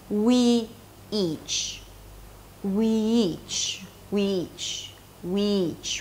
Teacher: It's just like one long E sound.